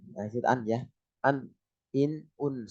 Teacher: ujung lidahnya berada di gusi atas nah itu tapi dekat gigi